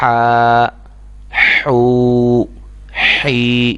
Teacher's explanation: یہ آواز ہا کی آنی چاہیے کیونکہ یہ حلق سے ادا ہوتی ہے اور وسط حلق کے درمیانی حصے سے ادا ہوتی